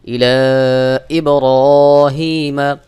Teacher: এর পরের শব্দের শুরুতে যদি আলিফে হামজা থাকে এক আলিফের জায়গায় তিন আলিফ টান দিয়ে পড়তে হবে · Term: মাদ্দে মুনফাসিল